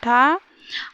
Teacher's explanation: मूर्धा में ठा आता है, महाप्राण अघोष है ठा